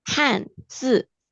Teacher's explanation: Dua-duanya adalah nada empat.